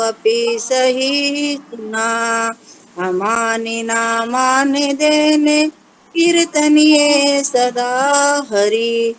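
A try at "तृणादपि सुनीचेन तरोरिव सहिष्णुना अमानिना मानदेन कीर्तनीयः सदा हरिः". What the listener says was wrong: आपने वैसे तो ठीक उच्चारण किया है शब्दों का तो एक दो वर्ड को छोड़ के लेकिन आपकी ट्यून सही नहीं है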